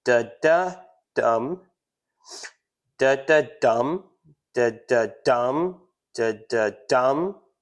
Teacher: Anapestic, it goes unstressed, unstressed, then stressed. So we got unstressed, unstressed, stressed, unstressed, unstressed, stressed.